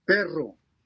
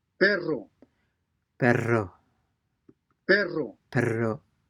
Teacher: the Spanish RR is a vibrating or trilling sound